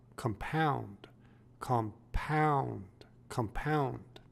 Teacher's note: with the emphasis on the second syllable